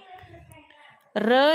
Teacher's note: र या वर्णाचा उच्चार करताना र कंपन निर्माण होते त्यामुळे त्या वर्णाला र ला कंपित वर्ण असे म्हणतात काय म्हणतात